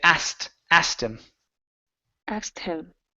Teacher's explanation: Or take out the K and you can say asked him.